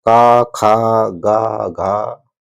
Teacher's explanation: तो क वर्ग के जो अक्षर आएंगे वे कंठ से बोले जाएंगे।